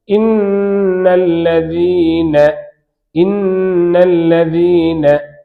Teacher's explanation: லாமுடைய மஹ்ரஜுக்கு கீழே, நுனிநாக்கு அப்படியே வாய்க்கு மேலே லாமுக்கு கீழே இணைந்தால் நூன் உண்டாகும்.